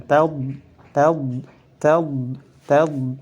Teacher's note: pertama tidak mengeluarkan nafas nafasnya ditahan tahu tahu kemudian lidahnya diangkat sampai mengenai apa mengenai langit-langit bagian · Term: huruf Thor